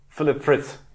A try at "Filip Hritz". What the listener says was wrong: He actually puts more of an F on it.